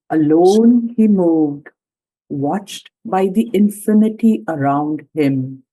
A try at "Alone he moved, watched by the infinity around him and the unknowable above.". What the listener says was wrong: Yeah, but you need to have a slight pause. You didn't pause at the end of the line. Very slight.